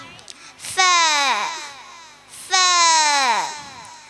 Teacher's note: മേലെ മുൻപലകളുടെ തലയും താഴെ ചുണ്ടും